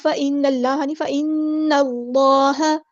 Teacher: نون کو ہیوی ادا نہیں کرنا، صرف لام کو ہیوی ادا کرنا ہے